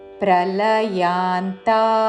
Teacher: ప్రల హ్రస్వములు యాంతా రెండు దీర్ఘములు